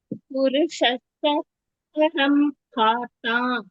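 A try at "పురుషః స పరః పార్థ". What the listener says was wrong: పరం లేదు పరఫ్ ఉంది పర విసర్గ ఉంది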